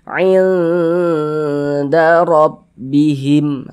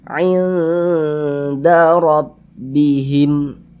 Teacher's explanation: Di bagian ain itu kita panjangkan sejenak, kita dengungkan. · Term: ikhfa hakiki aqrab